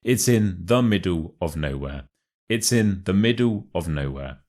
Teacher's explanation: you want to put the stress on the words middle and nowhere to really add emphasis to what you are saying